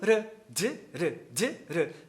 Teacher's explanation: a língua toca no mesmo lugar, articula da mesma forma, só que o R é mais rápido que o D